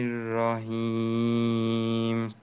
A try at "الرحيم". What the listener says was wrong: হা গোলহার মতো হয়ে গেল না? হেইম, হেইম, হ্যাঁ। হ্যাঁ, বাতাস গোলহাতেও থাকে, বাকি এখানে হলকের মধ্যখানে চাপের বিষয়টা। হেইম, আরেকটা হলো হিম, হেই, হি, এই যে পার্থক্যটা থাকবে।